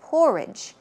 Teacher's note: stress goes on the first syllable